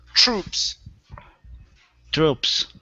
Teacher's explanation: give me a c-h-r sound with the tr